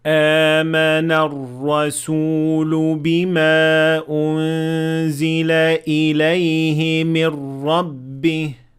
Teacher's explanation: So a Hamza and then after it a natural med of two harakat